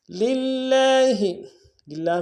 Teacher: للہ، للہ میں لام کو لام کے سامنے لانا ہے، لام کے اوپر تشدید زور دیں گے، کھڑا زبر ہے لام کے اوپر ایک الف دال میں کھینچیں گے۔